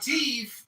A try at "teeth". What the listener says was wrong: There's no F. There's no F in the word teeth.